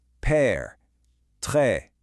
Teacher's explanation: This one, you'll notice, points the other way, and it creates a more open kind of relaxed e sound like in the English word get or bed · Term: accent grav